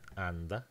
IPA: anda